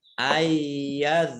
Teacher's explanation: nun sukun bertemu dengan huruf ya, bacaan idgham bi gunnah, masuk dengan mendengung